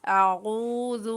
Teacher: عین کو حلق کے درمیان والے حصے سے ادا کرتے ہوئے، یہاں پر واو مدہ ہو رہی ہے تو عین کو ایک الف کی مقدار کھینچتے ہوئے پڑھنا ہے۔